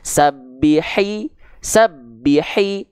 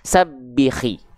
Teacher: H kecil makhrajnya tempat keluarnya itu bersamaan dengan huruf Ain